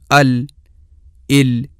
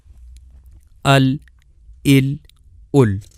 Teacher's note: زبان کا دائیں اور بائیں دونوں طرف سے تھوڑا سا کنارہ جہاں زبان کا ابتدائی اوپر والا حصہ ختم ہوتا ہے، جب اپنے بالمقابل اوپر کے جبڑے یعنی تالو سے ٹکرائے گا تو وہاں سے لام ادا ہوگی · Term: لام کا مخرج